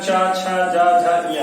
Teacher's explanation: ये सब तालु से आपका उच्चारण हो रहा है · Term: तालव्य